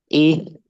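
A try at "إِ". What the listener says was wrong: Nah, yang paling kurang kasrohnya ya. Ih, alirannya kurang.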